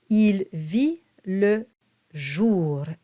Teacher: Il and vi, it's identical. And you don't pronounce the T, it's a silent T.